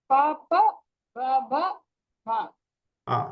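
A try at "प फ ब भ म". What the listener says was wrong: But you have to, that's not much difference between Alpa Prana, Mahaprana. So you have to ensure that pa, pa, ba, ba, ma.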